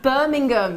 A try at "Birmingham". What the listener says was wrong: No, you don't say the H.